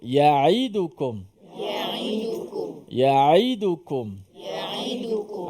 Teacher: Ain yang berbaris di bawah, elakkan daripada menyebut ain seakan-akan bunyi hamzah yang berbaris di bawah.